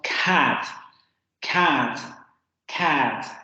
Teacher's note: en inglés, este fonema también lo habíamos visto que en posición inicial de palabra o de sílaba se aspira. Entonces decimos cat, cat, cat.